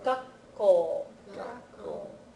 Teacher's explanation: You start to say a K sound, and then there's a gap, and then you say the rest of the K, or a second K maybe. · Whenever the small tsu occurs before a hard sound, like a K or a T, the small tsu in something like gakko, it's got that hesitation to it. It gets rendered in Romaji as a double K, gakko, like that.